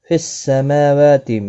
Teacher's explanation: میم اور واو دونوں کے اوپر کھڑی حرکات ہے، کھڑی زبر ایک ایک الف کی مقدار کے برابر کھینچ کر پڑھیں گے، تی کو کھینچنا نہیں۔